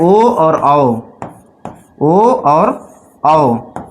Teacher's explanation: ओ और औ। इन दोनों का जो उच्चारण स्थान होता है वह क्या होता है? कंठ और ओष्ठ। कंठ और ओष्ठ है। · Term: कंठोष्ठ वर्ण